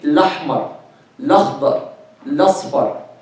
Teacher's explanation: They drop the Hamza. And they move its haraka to the letter before it, to the second letter before it.